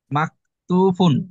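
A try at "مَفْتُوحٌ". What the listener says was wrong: মাক না, মাক না, মাফ। হুন, লাস্টে হা। মাফতু হুন, হা। মাফ। মাফ। তু হুন।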